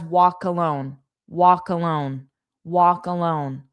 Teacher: we take the K from walk and we attach it to alone